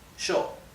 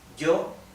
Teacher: Now let me remind you that in Argentina and in Uruguay, those two countries in Latin America, the Y and the double L, instead of being pronounced y, okay, is pronounced like the English SH, sh. So this would be pronounced sho, okay?